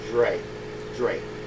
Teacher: it's j but it's also the D sound when the r is behind it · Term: j sound